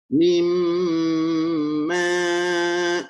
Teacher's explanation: Mim ma, 2 harakat. Mim, tahanlah suara di pangkal hidung tu. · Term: dengung